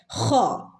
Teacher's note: ഭാഗത്തുനിന്ന് തൊണ്ടയുടെ മുകൾ ഭാഗം എന്ന് പറഞ്ഞാൽ തൊണ്ടയുടെ അവിടുന്ന് വായോട് അടുത്ത ഭാഗം തൊണ്ടയുടെ മുകൾ ഭാഗം എന്ന് പറഞ്ഞാൽ വായോട് അടുത്ത ഭാഗത്തുനിന്നുമാണ് ഹ എന്നുള്ള ശബ്ദം വരുന്നത്